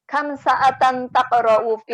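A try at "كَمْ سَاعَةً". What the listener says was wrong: Sa-nya panjang, ada alif.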